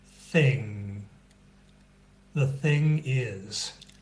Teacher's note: have the same position as you have with the G right the back of the tongue against the upper part of the throat but you don't let out that little explosion you don't let out the good sound okay you just stop